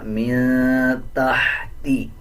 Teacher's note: تا کے بعد ہا ہے، اس ہا کو باریک پڑھا جائے گا